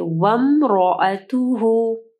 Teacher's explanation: grey colour میں ہے، ٹھیک ہے، اس کا مطلب ہے یعنی یہ الف سائلنٹ ہے، ٹھیک ہے، یہ ہم لوگ نہیں پڑھیں گے، ہم لوگ واو کو میم کے ساتھ ملائیں گے